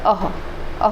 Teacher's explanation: इसका मुख के किस भाग से हम प्रयोग करते हैं, तो कंठ से निकलता है। अह कहाँ से निकलेगा, कंठ से निकलेगा। घोषत्व तो ये सघोष है, ये महाप्राण है, अल्प प्राण नहीं है बल्कि महाप्राण है। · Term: विसर्ग